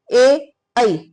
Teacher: हमारी जीभ है वो तालव से लगती है, आवाज कंठ से तो आती है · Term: कंठ और तालव